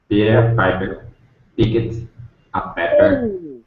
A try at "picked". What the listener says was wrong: When do we say id? There's no T or D there, is there? So picked.